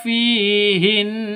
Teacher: Berarti cara bacanya harus ditahan, didengungkan selama dua ketukan.